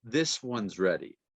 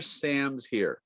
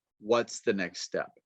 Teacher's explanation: So the is sound disappears.